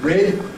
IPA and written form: rɪd (rid)